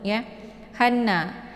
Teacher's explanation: cara bacanya itu cukup ditekan h nya kemudian langsung dileburkan ke dalam bunyi Nun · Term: Idgham Syamsiah